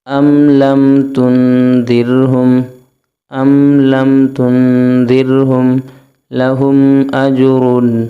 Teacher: میم ساکن کے بعد حمزہ آ رہا ہے، غنہ نہیں ہوگا۔ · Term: اظہار شفوی